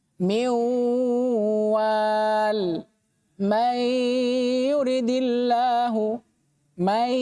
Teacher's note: selain dia idgham, nunnya dihilangkan dan dipindahkan ke setelahnya, dia juga harus dibaca dengan dengung. Ditahan 2 harokat.